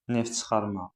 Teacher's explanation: Neft çıxarma. Uşaqlar f düşür.